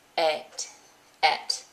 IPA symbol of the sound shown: ɛt